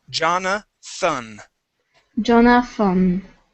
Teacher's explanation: here you're saying Jonathan pronouncing a t we need a th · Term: th sound